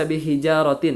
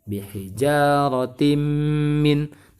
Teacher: Kasroh tanwin bertemu dengan huruf mim, sehingga kasroh tanwinnya itu dimasukkan ke huruf mim, ditahan 3 harokat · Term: idgham bi gunnah